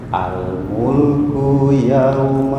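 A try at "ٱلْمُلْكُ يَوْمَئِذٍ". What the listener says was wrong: Ku pendek.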